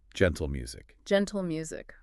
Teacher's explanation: the end of gentle, sort of flows right into the M of music. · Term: consonant-consonant linking